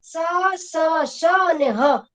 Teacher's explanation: જ્યારે આ બોલાય છે ને ફેફસામાંથી હવા બહાર નીકળે ને ત્યારે ઘર્ષણ સાથે બહાર નીકળે છે, એટલે એનો વ્યંજન છે ને ઘર્ષણ અનુભવે છે એટલે એને સંઘર્ષી વ્યંજન કહેવાય છે.